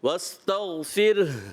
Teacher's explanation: پھر ہا آپ کا تھوڑا محسوس ہونا چاہیے، یہ محسوس ہونا ضروری ہے